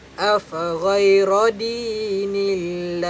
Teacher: Bila baris bawah, kita kena baca secara nipis. Jangan baca Allah secara tebal. Baca Allah dengan nipis.